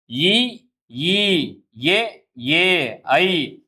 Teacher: வெளிப்படையாகவே பிறக்கின்றது. அடுத்து இ ஈ ஏ ஏ ஐ ஆகிய ஐந்தும் வாய் திறக்கும் முயற்சியுடன் நாக்கின் அடி ஓரமானது மேல்வாய் பல்லை பொருந்தும் முயற்சியால் பிறக்கின்றன.